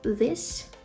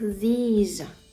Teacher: this на кінці звучить звук S А these є трошки більш протягнутим і на кінці звук більш схожий на букву з